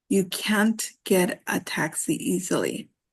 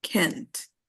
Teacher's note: the T is actually not pronounced very strong. It's actually a little soft